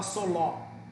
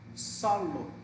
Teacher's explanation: você dá ênfase na penúltima sílaba. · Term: Paroxítonas